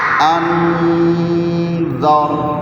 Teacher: حمزہ نون زبر ان، حمزہ نون زبر ان، دال میں زبان دانتوں کو لگا کے را کو موٹی آواز میں پڑھنا ہے، اور دال پورا لفظ صاف پڑھنا ہے.